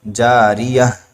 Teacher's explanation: تا کو ہم ہا ساکنہ سے بدل دیں گے، کیونکہ تا گول تا ہو آخر میں کلمے کے آخر میں